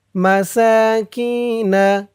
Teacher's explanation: সা এক আলিফ টান খারা জবর, মাসাকিনা কি এক আলিফ টান, জেরের পরে ইয়া সাকিন, মাসাকিনা আশারতি